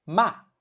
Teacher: The pitch is short and light with no fixed contour. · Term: neutral tone